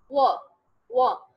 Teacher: वो में क्या होते हैं, आपके दोनों लिप्स गोल हो जाते हैं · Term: वो साउंड